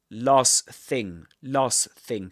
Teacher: what we do is to drop the one in the middle, especially if it's a t sound